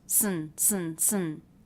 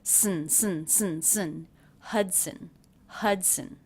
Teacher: when the schwa is followed by the end you don't need to worry about making a separate schwa sound it gets absorbed by the end